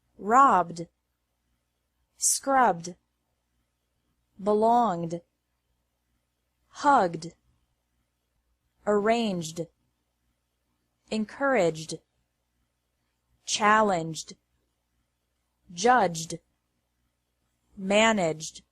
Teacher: Ed is pronounced like D after verbs ending in a B, G, or J sound.